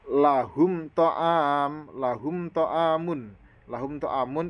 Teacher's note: ya lahum lahumamun lahumun ini mim mati bertemu dengan huruf th maka harus dibaca Idhar syafawi yang bacanya jelas tanpa mendengung